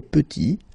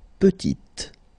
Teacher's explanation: Final T is not pronounced. And then when you add this E at the end, you get the sound T